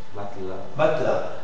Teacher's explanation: lire le mot matela sans e matela matela alors ça c'est la bonne prononciation celle ou tu élimines directement le E et on est l'articule que quand elle est absolument nécessaire si